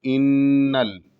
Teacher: یہاں پر بھی دھیان دینا ہے کہ لفظ ان پہ یہاں نون مشدد ہے تو یہاں غنہ ہوگا، اور غنہ کا مطلب کہ ناک میں آواز یہاں پر ٹھہرنی چاہیے، رکنی چاہیے، یعنی تقریباً ایک الف سے دو الف کے برابر، ایک حرف سے دو حرف کے برابر، دو حرف کے برابر ناک میں آواز رہنی چاہیے.